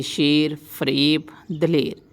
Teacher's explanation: جو بڑی یہ کھل کر نہ پڑھی جائے یائے مجہول کہلاتی ہے